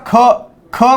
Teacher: महाप्राण म्हणजे त्याच्यामध्ये असा वर्ण ज्याच्यामध्ये ह मिसळलेला असेल, किंवा शेवटी तुम्हाला ह असा आवाज येईल.